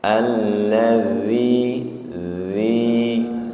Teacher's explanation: Alladzi dzi ya lembut ujung lidahnya menyentuh ujung gigi seri atas